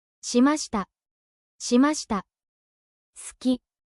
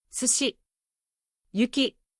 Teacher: The い or う sound is very light. Japanese speakers don’t push air through it. This is why Japanese sounds smooth and fast.